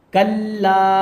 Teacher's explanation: کاف لام میں مل رہا ہے کیونکہ لام کے اوپر تشدید ہے ، اور پھر لام میں الف ملا ہوا ہے اس لیے